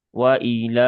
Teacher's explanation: Bukan wai wai, tapi wai. Waila lamnya ada fathah berdiri maka dibaca panjang dua harakat. Ya, dia mad asli ya, mad thbi'i dibaca dua harakat dan pastikan huruf lamnya ini adalah huruf yang tipis ya, bukan huruf yang tebal menjadi waila.